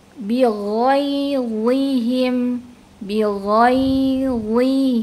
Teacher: Nah, ini kondisi yang kedua, pelafalannya adalah huruf zo adalah huruf yang idbaq. Jadi dalam kondisi kasroh pun tetap terdengar tebal dibandingkan dengan huruf yang lainnya. Bighairihim, bighairihim, ya, karena dia huruf yang idbaq.